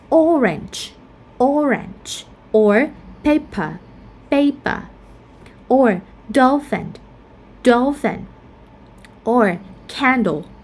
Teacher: these words are all noun and we stress at the first syllable.